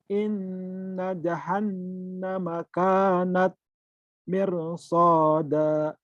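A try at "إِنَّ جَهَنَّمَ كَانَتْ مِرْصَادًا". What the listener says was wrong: sudah bagus, cuman di apa tadi? Digunanya ketahan. Harusnya gini. Inna jahannama kanat mirsada.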